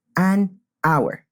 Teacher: we say an hour we don't say a hour because the H is silent